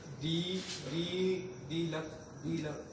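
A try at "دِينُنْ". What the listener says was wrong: एक पेश लगाना है, तो दीनु का,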